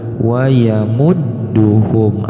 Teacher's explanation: huruf dal diberi tasdid, maka jangan dibaca wayamuduhum, tapi harus ada peleburan. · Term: bacaan ganda